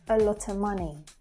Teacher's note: anytime the word of is said, it actually connects with the word before and after it. So we don't actually hear the V sound. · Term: connected speech